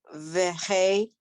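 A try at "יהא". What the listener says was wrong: No, not the. That's not a vav. That's a yud.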